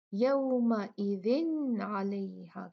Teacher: گے عین، تو یہاں پر ہم کریں گے تنوین کا اظہار، یہاں پہ ہم نون ساکن کو پڑھ دیں گے